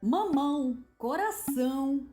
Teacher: A nasalização é, claro, uma marca muito distintiva do português